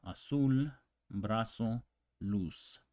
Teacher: places like Argentina is papasha Papo AER the Z in Spanish this Z doesn't exist really the sound it's just the same as the S as in cell